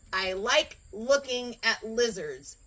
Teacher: So if I were to say, I like looking at lizards, that's a hard L because the tip of the tongue goes to your teeth